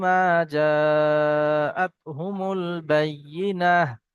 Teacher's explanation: দাঁড়ানোর সময় ওয়াকফ করার সময় হা হয়ে যায় এবং সাকিন হয়ে যায়, তাই এখানে সাকিন হয়ে যাবে।